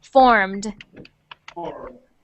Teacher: when we add the Ed onto that word we don't say Ed we say just a little sound at the end like the D